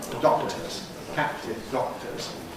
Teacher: there’s a moment of ‘double hold’, two places of articulation simultaneously